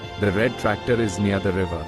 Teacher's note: She noticed that unlike her native language where the tongue taps the roof of the mouth, the American R is a dark sound where the tongue pulls back into the throat almost like a growl